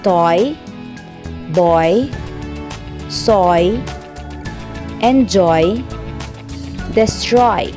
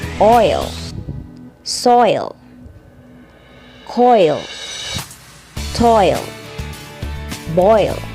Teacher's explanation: Vowel diphthongs are sounds formed by combining two vowels in a single syllable. The sound begins as one vowel sound and moves towards another.